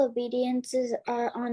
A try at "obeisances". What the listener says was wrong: Obeisances. Moksha, it's paying obeisance. That means paying your pranams. Obeisances. It's not D. It's obeisances.